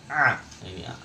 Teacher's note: huruf ain itu di tenggorokan juga, tempatnya sama dengan huruf ha